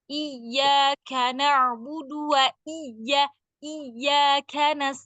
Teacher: kah itu sedikit ada hembusan nafas